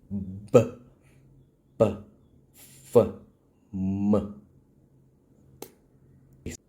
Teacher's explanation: And lastly, the group 5 bilabial group, or simply the lip sound. Close your lips tightly and release open to produce